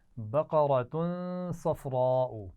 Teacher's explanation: بقرۃ صفراء، تنوین کے بعد صاد ہے تو یہاں غنہ بھی ہوگا، اور قاف را صاد یہ تینوں آپ دیکھ رہے ہیں، ان کو موٹا پڑھنا ہے. بقرۃ صفراء، یہاں پر بڑی مد ہے تو خوب کھینچ کر پڑھیں گے